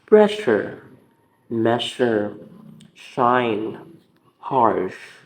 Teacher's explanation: The air is pushed through the tongue and further beyond the alveolar ridge. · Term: fricative